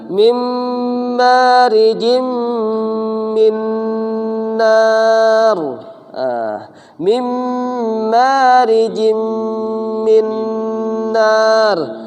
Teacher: Jadi suaranya ditahan 2 harokat disertai gunnah. Apa itu gunnah kemarin? Yaitu suara yang keluar melalui atau dari rongga hidung.